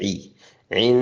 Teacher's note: नून पे गुन्ना करें, नून शद्दत का गुन्ना है